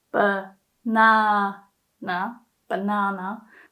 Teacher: for the word banana the first a is pronounced more like uh